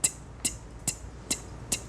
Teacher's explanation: So the tongue is on the back side of the two front teeth. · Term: T position